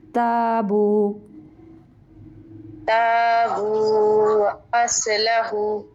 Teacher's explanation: تابو با کے بعد واو ہے لمبا کریں گے